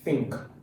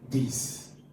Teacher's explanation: So one has the voiceless sound, one has the voiced sound.